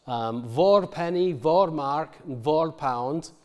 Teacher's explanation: all of these words that begin with a voiced fricative and that is our distinctly southern feature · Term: word initial voicing